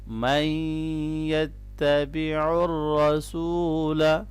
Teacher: را کو موٹا پڑھنا ہے اور واو مدہ ہے یہاں پر